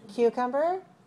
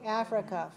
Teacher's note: you have to rise on the stressed syllable and then fall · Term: rise falling